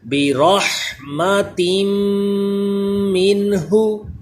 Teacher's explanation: نون ساکن کے بعد ہا حروف حلقی ہے، تو اظہار کا قاعدہ ادھر نون ساکن میں غنہ نہیں کریں گے، اس تنوین میں غنہ کریں گے